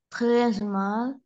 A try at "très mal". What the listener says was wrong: Смотри, буква S не читается. Прям очень хорошо читал. Но потом немножко ошибся. Буква S не читается. Très mal.